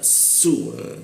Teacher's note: gigi atas sama bawah beradu ada hembusan yang cukup keras